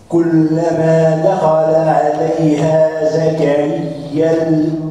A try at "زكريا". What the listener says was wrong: لماذا تمد؟ أنت تمد كأنك تقرأ لقالون أو لورش عن نافع. كلما دخل عليها زكريا، هذه عند ورش بس وعند قالون. أنت تقف كلما دخل عليها زكريا بس.